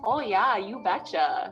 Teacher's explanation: if you're from north dakota you've got some long o's